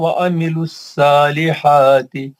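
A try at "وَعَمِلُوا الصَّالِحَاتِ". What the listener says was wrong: सालिहाती नहीं बोलना, वामिलु सॉल। जहाँ जहाँ मुस्तालिया के हर्फ आए हैं उसको थोड़ा मोटा करने की कोशिश करो।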